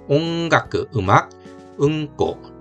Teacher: 이응도 기억도 다 같은 위치에서 나기 때문에 뒤에 기억 발음이 날 때는 이응받침으로 해 주시면 됩니다. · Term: 연국의 음